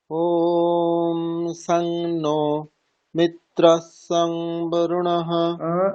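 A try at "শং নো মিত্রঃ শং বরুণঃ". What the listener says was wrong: আপনি সং বলছেন, সং নয়, সন। অনুসারটাকে নকার বলবেন। শান্নো, এরকম।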